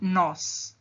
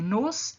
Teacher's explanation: Nós é tônico, nos é átono. Percebam que a força é diferente. Eu tenho uma intensidade diferente na hora de falar essa palavra.